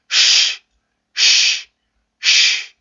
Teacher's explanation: 근데 요 발음일 때는 마찰을 만들어줘야 되기 때문에 혀가 이렇게 들려서 경구개 쪽으로 가까이 가요. 그래서 공기를 완전히 막는 게 아니라 흘려내야 되는 마찰음이기 때문에 아주 좁은 공간은 있어야 됩니다. 그래서 내가 의도적으로 공기를 불어내듯이 발음을 해주시면 돼요. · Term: 마찰 무성음